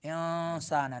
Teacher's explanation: نون میں نون کی آواز کو ناک میں چھپانا ہے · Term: اخفا